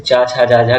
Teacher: तो चा छा जा झा किस में आ जाएंगे? सब आ जाएंगे तालु वाले में।